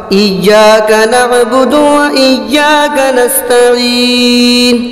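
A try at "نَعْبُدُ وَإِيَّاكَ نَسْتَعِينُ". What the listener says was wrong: ایاک نعبد و ایاک نستعین. نعبد و ایاک نستعین.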